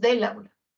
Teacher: unen ya no hay ese espacio en blanco entre estas palabras Incluso se pierde la vocal e del artículo masculino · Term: contracciones